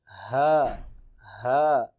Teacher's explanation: حروف حلقی میں سے ہے ہا اور ہم اس کو سینے کی طرف سے ادا کریں گے۔